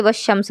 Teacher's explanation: لیکن اب آگے کیا ہے، اگر ان حرفوں کے علاوہ کوئی حرف آئے گا تو لام کا ادغام ہوگا، یعنی اس کو نہیں پڑھا جائے گا، جیسے والشمس وغیرہ۔ اب یہاں والشمس میں بھی لام ہے، لکھا ہوا ہے لیکن پڑھ نہیں رہے